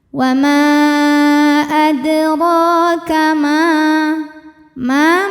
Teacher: dibunyikan secara tafkhim karena berharakat fathah maka dibacanya tebal